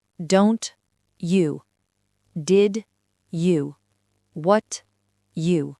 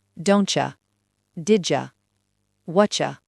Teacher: Lorsque le T ou le D rencontre le mot you, il fusionne pour créer un son totalement nouveau.